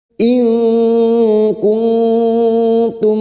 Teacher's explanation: kita samarkan bunyi nun sukun dan mendengung selama tiga harakat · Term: Hakiki